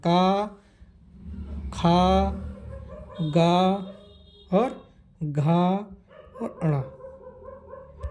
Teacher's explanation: कंठ से कहां से होता है कंठ से क का उच्चारण क ख ग और घ और अण इनका उच्चारण कहां होता है कंठ से